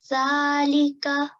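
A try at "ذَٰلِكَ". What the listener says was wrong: So just wanted to hear how you say the dhal. Could you pronounce it a bit tiny bit softer? So touch your tongue with your upper teeth and then say the. But make it a tiny bit more softer, okay?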